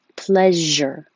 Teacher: Pleasure. And it's the sh with voicing. J, pleasure.